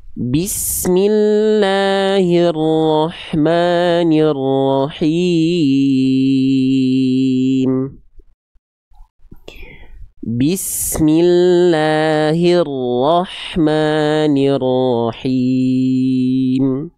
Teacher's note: Nggak jelas ya vokal i di bagian hi dan ni nggak jelas ya. Jadinya hirro, nirro.